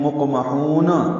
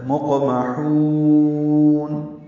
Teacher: مقمحون یعنی مقمحون نہیں پڑھنا، مقمحون لمبا کریں گے. مد عارض سکون بنائیں گے اور نون کو ہلائیں گے نہیں، یعنی نون ہلا کر ادا نہیں کریں گے، نون پہ قلقلہ نہیں ہوگا. پڑھتے ہیں یوں مقمحون، یہ غلط ہے.